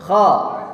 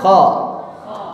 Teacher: cara mengucapkan kha, lidahnya terangkat, tapi untuk menunjukkan keinfitahannya mulut kita dibuka. Untuk menunjukkan ada ruangan.